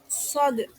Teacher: Bertemunya ujung lidah dengan ujung dua gigi seri bawah.